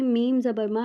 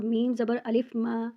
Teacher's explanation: میم زبر ما نارمل پڑھیں گے اور میم زبر الف ما یہاں ایک الف کے برابر اس کو لمبا کریں گے، مطلب اپنے ہاتھ کی مٹھی کو بند کریں گے اور اس کو جب تک کھولیں گے اتنا لمبا ہوگا۔ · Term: الف مدہ